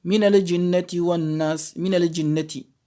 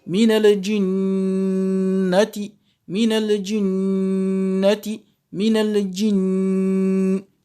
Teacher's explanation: ce qu'il faut faire, c'est une rouna de 2 temps au niveau du noun.